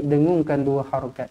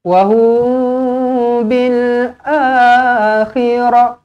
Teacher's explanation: Mim kosong bertemu dengan ba, ikhfa syafawi. Dengungkan dua harokat.